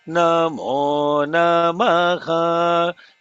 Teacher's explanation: Namo Namaha has to be no emphasis on the na on the second namaha.